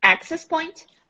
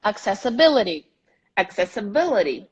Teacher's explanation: access has the stress on the A. Accessibility has the stress on ability.